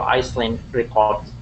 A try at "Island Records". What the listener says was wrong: So the S is silent. So it looks like Iceland, but it's pronounced Island. Ice, because if you say Iceland, it's ice.